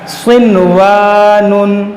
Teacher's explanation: अलिफ से पहले ज़बर है, ये अलिफ मद्दा है तो इसको खींचेंगे